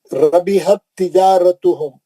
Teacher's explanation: ता साकिन का ता मुशद्दद में इदगाम में मुतमासिल